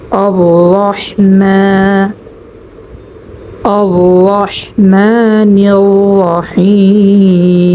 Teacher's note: মিম এর উপরে খারা জবর হওয়ার কারণে মা আমরা এখানে এক আলিফ পরিমাণ টান করব